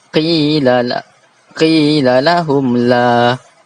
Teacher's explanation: Kenapa izhar syafawi? Kerana Mim mati bertemu dengan la. Bacaannya kena baca dengan jelas.